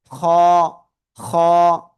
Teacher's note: হলক মানে গলা, গলার শেষ, সেই জায়গা থেকে আমরা এই অক্ষরটা উচ্চারণ করব মোটা আওয়াজে।